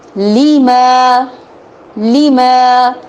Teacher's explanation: لی کو لمبا نہیں کرنا، ما کو لمبا کرنا ہے